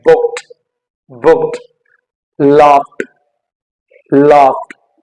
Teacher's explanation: किसी और वर्ड पे अगर जो आपका वर्ड किसी दूसरे साउंड, वॉइसलेस साउंड पे अगर एंड होता है और उसके लास्ट में अगर आप ईडी ऐड करते हो, तो वहां पे उसकी जो प्रोनाउंसिएशन होगी दैट वुड बी ट